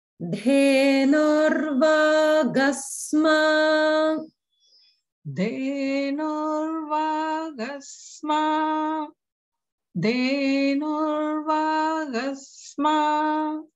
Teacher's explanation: everyone notice how the de is a mahaprana. De, not the regular de.